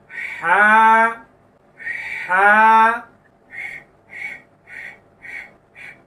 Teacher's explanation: একেবারে কণ্ঠনালীর মধ্যখান থেকে উচ্চারিত হবে।